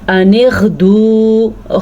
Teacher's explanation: غین کا تلفظ ہے اس کا دھیان رکھنا، ایک تو حلق سے نکلے گا دوسرا پر کر کے نکلے گا